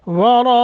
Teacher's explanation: ورا دونوں کو موٹا کرنا ہے اور مد متصل ہے، اس کو بہت زیادہ لمبا کریں گے